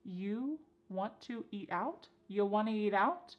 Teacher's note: we have reduced want to to become wanna